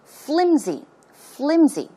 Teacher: It's not pronounced with an S sound, but it's closer to a Z sound.